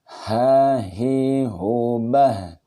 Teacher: H ini ciri-cirinya nafas berhembus. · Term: huruf H